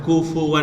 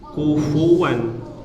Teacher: bibir bawah bagian dalam bertemu ujung gigi seri atas